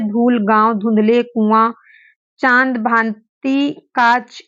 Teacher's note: अनुनासिक शब्द है ठीक है जो नाक से बोले जाते हैं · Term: अनुनासिक ध्वनि